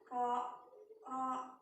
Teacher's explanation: Jadi maksud dari ro ini makhrajnya yaitu sebenarnya kita itu mau nyebutnya ra, tapi karena makhrajnya letak lidah maupun mulut sehingga masuk dalam kategori satu huruf yang harus dibaca tebal, ya, ro, yaitu ujung lidah, ya, bertemu gusi, bertemu langit-langit, yaitu pangkal gigi atas, ya, terus keluar getaran di situ, ya, ro. Nah, terus dagunya ini agak menurun, diturunkan, ya, ro, ya. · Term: huruf tebal